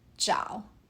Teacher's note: Jiao uses the third tone. Your voice falls then rises. Listen again.